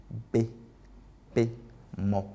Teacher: Bilabiales parce qu'elles font intervenir en fait les deux lèvres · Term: consonnes bilabiales